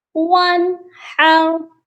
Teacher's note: نون ساکن پر غنہ نہیں کرنا، یہاں پر اظہار ہوگا